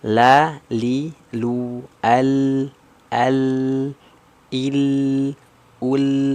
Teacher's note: huruf lam itu memiliki karakter sifat jahar tuh jahar ya berarti tidak mengeluarkan nafas